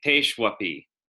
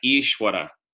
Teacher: The V in Ishwara because sounds more like a W after a consonant